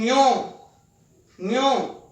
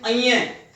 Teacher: तालु और नाक की सहायता से बोली जाती है ध्वनि ञ, ञ। बहुत सारे बच्चे इसको बोलते हैं अइये।